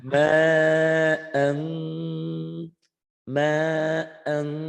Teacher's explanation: Jadi ikhfa itu ada angnya, ditahan.